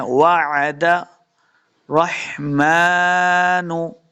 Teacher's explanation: मीम के ऊपर खड़ी ज़बर, इसको दो हरकत लंबा करके पढ़ना है।